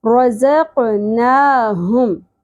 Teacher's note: रज़क़नाहुम, हम नहीं है ये, ह, हा अक्सर हलक से अदा होगा। हलक के सबसे नीचे गहराई वाले हिस्से से सीने की जानिब से ह अदा होगा गहराई के साथ, ठीक है। सांस की आवाज़ नहीं आनी चाहिए।